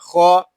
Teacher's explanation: خو یہ حروف مستعلیہ میں سے ہے، اس کو پوری یعنی موٹا پڑھیں گے